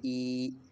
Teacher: کریں گے بلکہ نرمی کے ساتھ جو ہے وہ ای، اور یا سے پہلے زیر ہے تو ایک الف جتنا اس کو لمبا کیے ای۔ بچے اس سے پہلے سب حروف کو زیر کے ساتھ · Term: یا مدہ